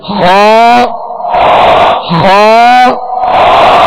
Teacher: حلق کے اوپر والے حصے سے ادا ہوتا ہے. حلق کے اوپر والے حصے، یہ اوپر سے مراد یہ ہے کہ یہ منہ کی جانب جو حصہ ہے، یہ وہ حلق کا اوپر والا حصہ جو منہ کی جانب ہے، جو منہ کی جانب ہے. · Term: حروف مستعلیہ